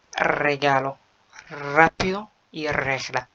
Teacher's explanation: أول لما حرف ال R بيجي في أول الكلمة بيتنطق دبل R